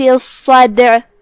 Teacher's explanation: ہم صاد کو 2 حرف کے برابر ادا کریں گے کیونکہ اس پہ تشدید ہے. جو کہ صاد حروف تفخیم میں سے ہے تو اس کو بھاری آواز میں ادا کرنا ہے.